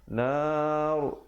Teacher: berhenti dalam keadaan ro yang tebal